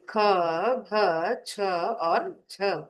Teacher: महाप्राणः, यानी जिसमें बोलते समय अधिक श्वास भरी जाती है, अधिक श्वास के साथ उच्चारण